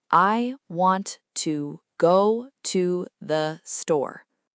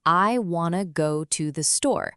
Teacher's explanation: The important words wanna, go, store get more stress. The small connecting words kind of blend together. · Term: stress-based rhythm